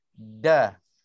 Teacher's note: dal Melayu, lidah dia macam tergulung ataupun kita menggulung lidah ke langit